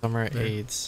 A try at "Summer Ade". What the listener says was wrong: There's no S. It's aid. like lemonade. Like summer aid. Like lemonade, limeade, summer aid.